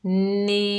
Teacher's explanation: यहाँ मद बनेगी मद्द मुनफसिल जायज़। इस मद को तीन अलिफ की मिकदार खींचकर पढ़ेंगे